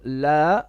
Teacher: here we have a mad of 4 beats